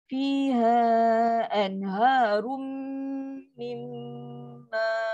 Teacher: Tengok bila tanwin jumpa dengan huruf mim yang bersabdu, paling sempurna dengung dia. Nun mati jumpa dengan mim sabdu, paling sempurna. Sebab tu kena panjang.